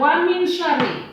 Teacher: Hukumnya adalah ikhfa. Ikhfa ini dibaca samar atau di antara jelas dan dengung